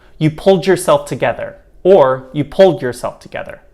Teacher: you and your this behaves much in the same way where it can become a light d but it can also be a j sound